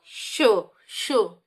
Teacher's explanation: अब आप ऊष्म व्यंजन पे आ जाइए, तो श, ठीक है, तो ये तालु से निकल रहा है